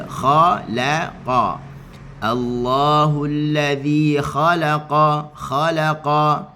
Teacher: Kha tebal, qaf juga adalah huruf yang tebal. Maka kita baca dengan lam tetap dalam keadaan nipis je.